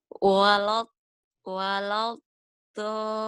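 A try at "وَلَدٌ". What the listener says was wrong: Itu udah kedengarannya udah hampir bisa.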